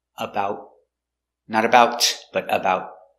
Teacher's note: the t is a stop te so we put the tongue up and we stop the air